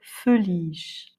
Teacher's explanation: l'accent est sur le I et le E est dans le nez